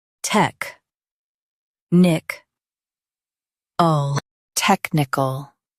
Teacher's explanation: Stress tech and keep nic soft.